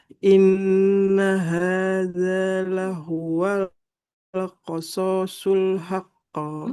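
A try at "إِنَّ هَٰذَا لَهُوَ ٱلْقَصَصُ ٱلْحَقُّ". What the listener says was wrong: Qasasul shotnya nggak panjang. Haqqo. Haqqo. Nah, karena ada tasdidnya ya, jadi tidak langsung memantul haqqo. Tidak seperti itu. Agak ditahan dulu. Jadi namanya qalqalah akbar ya. Qasasul haqqo seperti itu.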